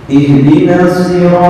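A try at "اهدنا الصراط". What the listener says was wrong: Nah, sod kurang ismam.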